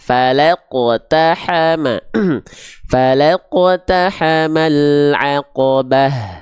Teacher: yang harus diperhatikan teman-teman sekalian huruf q ini huruf yang tebal huruf q ini dalam keadaan sukun harus selalu dibaca dengan keadaan tebal jadi jangan sampai dibacanya gini dengan pantulan yang tipis Nah ya